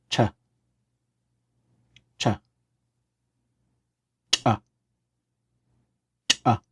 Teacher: As we make these, we keep in mind that we're not using our lungs, but we're pushing the air out of our mouth, and we end up with a very hard sound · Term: pinched consonant